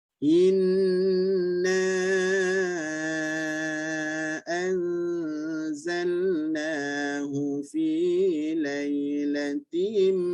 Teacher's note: Jaga dengung inna panjang, ya, 4 harakat.